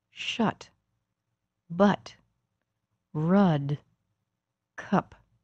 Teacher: The sound is not front and not back, not high and not low. It's a very neutral sound, a relaxed, middle, central vowel sound.